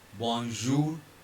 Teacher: R will be silent because it is the consonant at the end of the word.